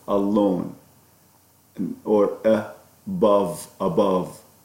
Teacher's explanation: So this sound is called the schwa, as in the first sound of alone, or above, or so it's a sound that is the weakest sound in English. We describe it as a mid, central, unrounded, lax vowel.